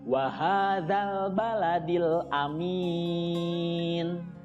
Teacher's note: Mad Arid lissukun panjangnya bisa 2-6 harokat